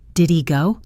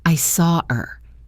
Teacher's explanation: The H sound at the beginning of unstressed pronouns like he, him, her, his, is also a frequent victim of elision. Did he go often sounds like did he go?